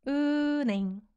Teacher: You'll barely hear 히읗 sound being pronounced. 은행, because of consonant assimilation.